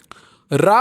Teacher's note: रा उच्चारण में जीभ में कंपन होता है, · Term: लुंठित